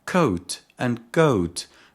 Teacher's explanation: begin with velar consonants because the back of the tongue touches the soft palate